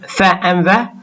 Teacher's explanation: the upper teeth and the lower lip, when we produce fa and va, where an obstruction of air occurs in the vocal tract. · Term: labiodental fricatives